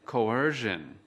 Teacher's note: Từ coercion có 3 âm tiết. Trọng âm của từ coercion ở âm tiết thứ hai.